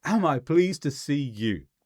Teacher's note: we change the intonation to make it sound like a declarative